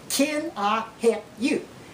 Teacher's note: Now you may have noticed that we leave the L sound out of the middle of help